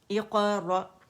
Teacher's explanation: حمزہ باریک ہے اور جھٹکے سے پڑھا جائے گا